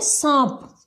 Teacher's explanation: उनका उच्चारण करते समय नाक और मुख दोनों से हवा निकलती है, इनके दोनों के ऊपर हल्का सा दबाव रहता है। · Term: अनुनासिक